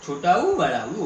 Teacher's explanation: ओष्ठ स्वर में ऊ का प्रयोग ओठों की सहायता से होता है, और ओठों की सहायता से होने के कारण इन्हें ओष्ठ स्वर कहा गया है।